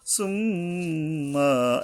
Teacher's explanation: মিমের উপরে গুণনা করতে হবে, গুণনা করা কিন্তু ওয়াজিব